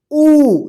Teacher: ये छोटा उ है ह्रस्व उ ठीक इसके उच्चारण में कम समय लगेगा